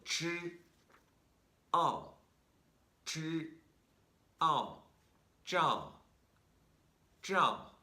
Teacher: it's a J with the tip of your tongue pointed up and making some contact with your hard palate. That's right here. · The one with ZH is a retroflex consonant.